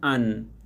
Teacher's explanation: জিহ্বার অগ্রভাগ ও তার বরাবর উপরের তালু, এ মাখরাজ থেকে উচ্চারিত হয় নুন হরফ